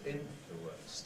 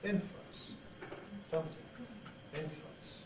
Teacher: We can say this as 3 syllables, influence, tumtity. Or we can say it as 2 syllables